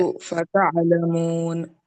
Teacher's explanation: یہاں پر سو میں واو لین ہوتا ہے، جلدی پڑھنا ہے، تعلمون میں واو مدہ ہوتا ہے، صحیح پڑھے، آئین کی آواز اور اچھی طرح ادا کرو۔